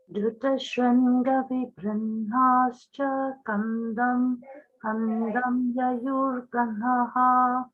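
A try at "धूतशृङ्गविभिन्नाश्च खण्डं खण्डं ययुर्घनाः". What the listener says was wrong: So let the kha be samahaprana. So instead of doing anuswara khandam, do khandang. First one is like Ganga.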